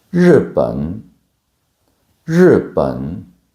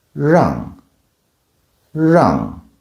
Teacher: Now let's talk about the rogue of the retroflexes in Mandarin Chinese, the r sound. It's not like the French r or the English r. It's somewhere in between. It's like your tongue curls back